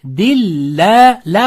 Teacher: Alloh lafzi o'zidan oldingi so'zga kasra bilan o'lansa Alloh lafzini lami la o'qiladi. Shunda dilla ikki harakat.